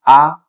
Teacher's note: आ बोल रहे हैं आ तो ये पूरा खुल रहा है एकदम से